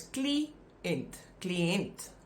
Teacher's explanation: if I pronounce it slowly, you'll see there's a separation between the I and the E. You'll pronounce it like kli and then ent.